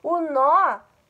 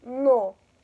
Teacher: No é um som fechado, não é no seu carro. O nó me dá uma ideia de som mais aberto, E aí eu acentuo.